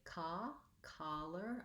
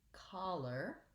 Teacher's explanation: And then lastly, collar has the vowel, and that's an open, unrounded vowel. So when I say collar, I don't want to feel any lip rounding. The main difference between collar and collar is that caw has rounding and ka is more open, unrounded.